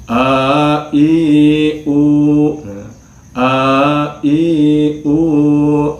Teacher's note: Mung sifatna hamzah mah sifatna jahar, al-jahru, hartosna ketika diucapkan hamzah mah teu kaluar angin